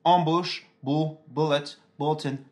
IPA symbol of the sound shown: ʊ